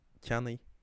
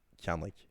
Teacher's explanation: In Connacht and Ulster you find something like canny, and in Munster it's very clearly canly.